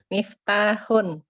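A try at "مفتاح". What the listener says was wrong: Ahsanti, sahih ya.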